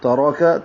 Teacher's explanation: تا باریک ہے، را پر ہے، کاف باریک ہے